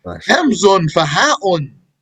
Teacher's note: He didn't say hamzatun because he has to keep the beat. So he dropped the ta marbuta.